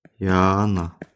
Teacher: Dosyana sözündə S-T samitləri yan-bayan işlənərsə, bax, bu T düşür.